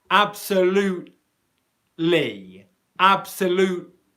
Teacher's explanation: the L sound that comes right after the T comes from the same position in the mouth